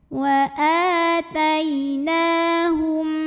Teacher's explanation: Wa atainahum, berikutnya ada idgham mimi karena mim sukun bertemu mim yang hidup, maka mim yang pertama yang mati dimasukkan langsung ke mim kedua